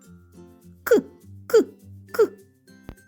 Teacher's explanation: вимовляючи цей звук пісенька не виходить його не можна Ні потягнути ні проспівати він точно вибухає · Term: звук к